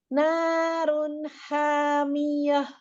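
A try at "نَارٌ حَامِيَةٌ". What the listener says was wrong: Masih tengah-tengah itu hanya ya. H kecil sama H besar kurang ke bawah.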